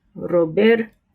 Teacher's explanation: The second R has the flapped, like D sound, Roberto. But the first R, an initial R, is pronounced with a trill.